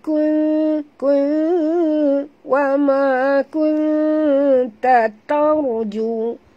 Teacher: Jadi bunyi dengung dia tu bukannya ya, dengung saja, kita kena sorokkan separuh daripada bunyi dengung nun itu ke dalam huruf ta ni. Jadi nun itu kedengaran samar-samar ya. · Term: huruf ikhfa